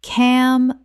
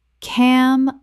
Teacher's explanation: Three syllables with the final g e making a z h sound.